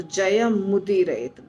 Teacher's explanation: हैं संधि करते हैं तो जय मुद रत बन जाता है आधा म और उ मिक्स हो जाता है और मु बन जाता है